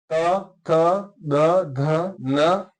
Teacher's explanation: त थ द ध न, इसको याद करने का सबसे अच्छा तरीका है कि आप उच्चारण करते समय ध्यान दें कि आपकी जो जीवा है ना वो दांत पर स्पर्श कर रही है, तो दांत पर स्पर्श करने से जो ध्वनि उच्चरित होती है वह ध्वनि हो जाएगी आपकी दंत्य।